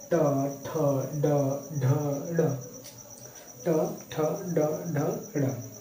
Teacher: ट वर्ग कहाँ से बोला जाता है? मूर्धा से।